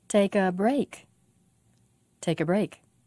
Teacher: take a break three syllables stress on break